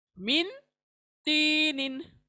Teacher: तो अभी देखें, नून साकिना के बाद फॉलोड बाय तो, एंड तो हुरूफ हालांकि नहीं है, तो दैट मीन्स नून को पढ़ना नहीं है, हमें ओनली नेसल साउंड को प्रोड्यूस करना है।